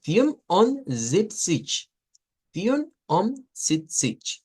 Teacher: la pronunciación va a ser no con una G, sino con un sonido que es como sh, una SH